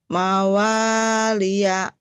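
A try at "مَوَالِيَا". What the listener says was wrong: Mawalia. Bagus.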